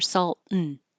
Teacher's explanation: You won't hear any vowel before the N at all. If the word before the and begins with a T or an N, then you're holding your tongue in that spot already. · If the word before the and begins with a T or an N, then you're holding your tongue in that spot already. Salt, so you don't have to release it. Salt and you just hold it there.